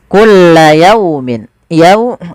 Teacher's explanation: Di sini ada fathah bertemu wau. Bacaan lin harus lembut.